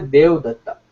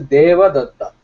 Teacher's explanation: In Sanskrit, in Hindi, what usually happens is, especially in many North Indian languages, whenever you have a short akara, people tend to drop it. Okay, it is a very regular process.